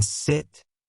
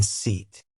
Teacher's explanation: the distinction between the short I in sit and the long E in seat